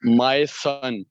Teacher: my is unstressed Sun is stressed